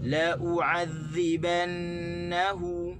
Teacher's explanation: Sebenarnya lam tu kita tak boleh tekan. Kita kena tekan di hamzah.